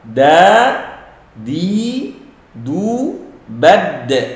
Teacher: Ujung lisan ketemu gusi dua gigi seri atas. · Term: qalqalah